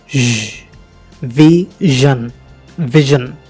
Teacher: ష్ అని గాలి బయటకు వస్తుంది, బట్ మన వాయిస్ యాక్టివేట్ అవుతుంది. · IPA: /ʒ/